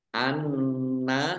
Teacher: nun tasdid dibaca guna atau mendengung, ditahan 2 harokat